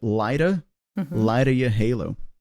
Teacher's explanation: The phrase light of your halo is interesting because, again, in connected speech, the word of gets reduced and it's just a simple schwa sound.